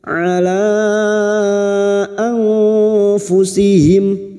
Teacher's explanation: Ala anfusihim nun sukun bertemu fa ikfa hakiki kita samarkan bunyi nun sukun dan mendengung selama 3 harokat